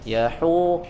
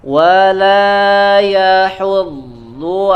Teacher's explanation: huruf ha-nya jangan terbawa menjadi tebal, ya, karena mengikuti huruf dod. Yahu, hu-nya tipiskan dulu.